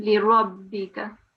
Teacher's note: the ra here needed to be pronounced with a round mouth because we are carrying a fatha on the top. So it has to be a full round mouth on the ra.